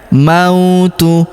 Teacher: Huruf ma kita ayun sekali karena waw sukun di depannya.